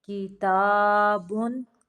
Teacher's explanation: یہاں پہ تنوین کو صرف ظاہر کرنا ہے، تنوین پہ غنہ نہیں کرنا۔